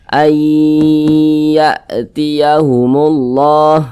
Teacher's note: cara membacanya itu dengan cara memasukkan kemudian disertai dengan gunah disertai dengan dengungan · Jadi dibaca ai ya, gitu. Kemudian didengungkan, digunahkan. Jadi suaranya itu kita tahan sejenak, kita panjangkan. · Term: Idam bunah, idgham bi gunnah